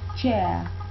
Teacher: if you adopt the British pronunciation, you won't pronounce the R at the end. You just say chair.